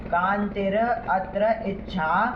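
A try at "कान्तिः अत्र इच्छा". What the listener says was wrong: कांतिर क्या होता है? फिर अत्र कहाँ से निकलेगा? कांतिर और अत्र ऐसे कैसे होगा?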